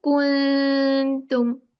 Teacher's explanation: We don't touch the makhraj of the noon. We keep our tip of the tongue away from noon makhraj and try to hide the noon. Now this hiding, this we make 2 count gunna. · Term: ikhfa